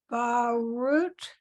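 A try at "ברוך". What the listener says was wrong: That last letter is a ch. Okay, Baruch. It's Baruch.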